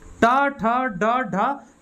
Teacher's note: ये मूर्धा को स्पर्श कर रहा है। टा, ठा, डा, यहाँ ऊपर वाला जो पोर्शन होता है ना, जीभ का ऊपर वाला पोर्शन, इसको टच कर रहा है, ठीक है।